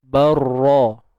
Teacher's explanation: Tanwin jumpa dengan ra ni hukumnya idgham bila gunnah, IBL. Okey, masukkan tanwin tu ke dalam ra, barra bila gunnah. Dia tanpa dengung. Barra. Ra pun nak tebal dia, angkat pangkal lidah lah.